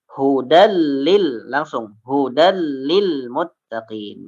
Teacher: Dibaca idgham ya, dimasukkan ke dalam huruf lam, tanwinnya dimasukkan huruf lam, namun ya tidak ditahan.